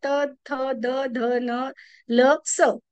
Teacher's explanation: त्याच्यामध्ये दंत मध्ये येतात त थ द ध न ल स हे दंते आहेत ज्याच्यात दाताचा वापर केला जातो